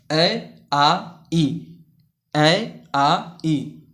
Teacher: निर्नुनासिक स्वर या मौखिक स्वर, इनके उच्चारण में हवा केवल मुख से निकलती है